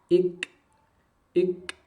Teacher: ada percikan nafas Ik jangan Ik tidak ada percikan nafas tapi Munculkan percikan nafasnya sifat Hames ik ik jangan terlalu pecah contoh Kalau pecah ik ik bukan